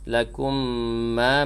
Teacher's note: Fa inna wajibul gunnah dengung pada nun yang tasydid. Lakum ma, mim mati bertemu dengan mim idgham mithlain dengung juga. Sa'altum, yang ni qaf lam ya.